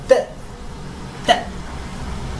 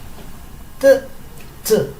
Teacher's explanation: la T sí se dice T, pero se dice un poquito como expulsando el aire. T. Un poquito más prolongado.